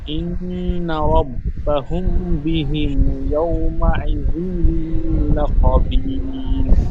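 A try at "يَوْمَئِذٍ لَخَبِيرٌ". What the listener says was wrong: ইয়াওমাইযিল বলে টান গুন্না হয় না, জালের নিচে দুজে তানবিন, তানবিনের পরে ইয়ার মালুনের 6টি অক্ষরের মধ্যে লাম এসেছে, তাহলে তানবিনটি বিনা গুন্না হবে। ইয়াউমাইযিল বলে গুন্না হবে না। ইয়াউমাইযিল লাখাবীর, বলেন। ইন্না রাব্বাহুম বিহিম ইয়াউমাইযিল লাখাবীর, বলেন।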